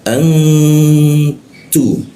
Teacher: Jadi dibacanya didengungkan ditahan dua ketukan lalu dibaca ta. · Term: ikhfa